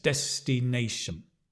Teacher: then when you have the top one it's a hard stress so we stress Nation but there's a soft stress on Des